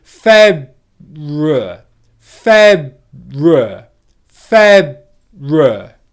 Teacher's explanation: I go into the B position, but I come out of that in the R position.